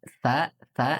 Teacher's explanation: lidahnya ujung lidah kita bertemu ujung gigi dari atas